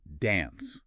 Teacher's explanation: a British speaker would say dance with that lovely open a sound